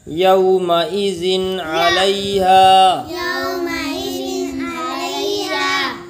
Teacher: تنوین یا نون ساکن کے بعد حروف حلقی آویں تو نون کو ظاہر کر کے بلا غنہ کے جلد پڑھیں، اس کو اظہار کہتے ہیں۔